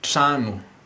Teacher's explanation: Notice the stress is on the first syllable, which is tra.